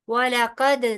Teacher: दाल पे कलकला होगा क्योंकि हरूफ कलकला में से है